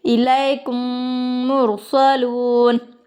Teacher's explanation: میم کو میم کے ساتھ ملا کر گنے کے ساتھ پڑھیں گے, اس کو ادغام شفوی کہتے ہیں.